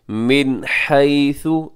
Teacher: नून साकिन है, नून साकिन के बाद हा, यहाँ पे इजहार कीजिएगा, इजहार हलकी।